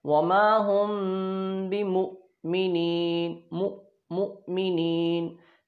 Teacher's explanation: हमज़ा साकिना झटके से अदा होता है,